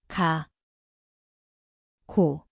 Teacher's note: Zveni kot G, K mesto je zadnji del jezika.